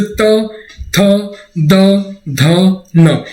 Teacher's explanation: इन वर्णों को बोलने पर हमारी जिह्वा जो होती है वो हमारे दांतों पर टच होती है।